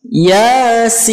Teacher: Nah, ya-nya ini cukup 1 ayunan ya atau 2 harokat. Kemudian sin-nya ini kita baca 6 harokat.